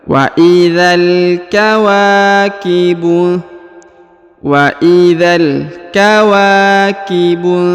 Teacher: Huruf wa dibaca 2 harokat ya, karena di depannya terdapat alif